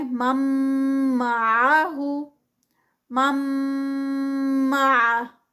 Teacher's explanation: merging میں ہم تھوڑا سا ٹھہریں گے، اسٹریچ کریں گے، اور یہ جو اسٹریچ ہوتا ہے ود غنہ میں وہ 2 کاؤنٹس کا اسٹریچ ہوتا ہے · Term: ادغام ود غنہ